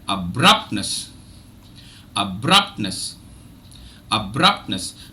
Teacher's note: Now when I divided the word into syllables, you would have realized that the second syllable is stressed because that had the maximum number of sounds.